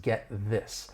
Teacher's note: we're going to stop the air with that final T in get and then release it into that voice TH in this